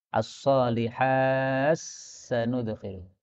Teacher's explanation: Taknya hilang, masuk dalam sin. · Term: idgham